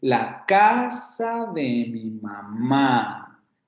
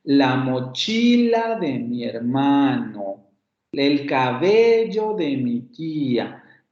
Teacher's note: la mayor fuerza entonativa cae en la sílaba tónica de la primera palabra